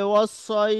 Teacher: যদি আমরা থামি তাহলে ওস এরকম টেনে আমরা থামতে পারি